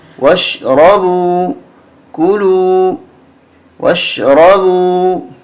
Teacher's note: یہاں یہ الف نہیں پڑھا جائے گا واو کو شین کے ساتھ ملائیں گے